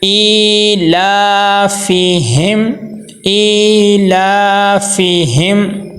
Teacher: میم کی آواز کو ناک میں نہیں لے کے جائیں گے، غنہ نہیں کریں گے بلکہ ظاہر کر کے پڑھیں گے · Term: اظہار شفوی